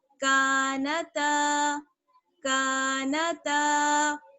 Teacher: کاف کو کھینچیں گے اور تا کو کھینچیں گے، ان دونوں میں کیا ہے؟ الف جڑا ہوا ہے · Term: الف مدہ